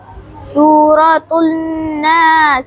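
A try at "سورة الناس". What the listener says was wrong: सूरतुन नासी, देखो यहाँ पे नून मुशद्दद है, गुन्ना होगा, गुन्ना पूरा होगा।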